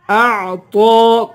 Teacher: طا کو پر پڑھیں گے اور ایک الف کی مقدار طا کو کھینچ کر پڑھیں گے